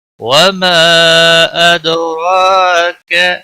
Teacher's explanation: الف مدہ ہے، 1 الف کے برابر کھینچ کر پڑھیں گے